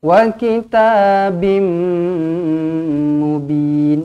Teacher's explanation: Bermakna kita kena masukkan ke dalam huruf mim. Huruf ba ni, tanwin ni, masukkan ke dalam huruf mim berserta dengan dengung. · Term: idgham ma'al gunnah